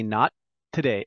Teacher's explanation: there's a little pause i don't say not a day i say not today and i hold it